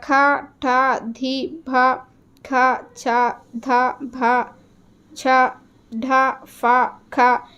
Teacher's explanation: ఇవన్నీ కూడా మనకి మహాప్రాణాక్షరాలు, అంటే ఒత్తుతో పలుకుతూ ఉన్నాం కదా. సో వాటిని మహాప్రాణాక్షరాలని అంటూ ఉంటాం.